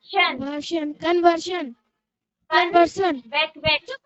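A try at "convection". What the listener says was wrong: वर्षन नहीं बेटा, बैक, हाँ हाँ बेटा, कन, CON कन होता है, वेक, VEC वेक्शन, ठीक है, कन्वेक्शन, UN होता है, हाँ, कन्वेक्शन, कन्वेक्शन, आधा आधा करके, वेरी गुड,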